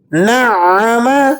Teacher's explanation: عین کو مشدد ہونے کی وجہ سے سختی سے بھی ادا کریں گے